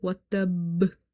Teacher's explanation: you have to close your lips and then you have to open it in order to pronounce the ba twice, because if you say watab, ba will be pronounced once.